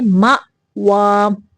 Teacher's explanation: یہاں پہ حمزہ کو جھٹکا دیں گے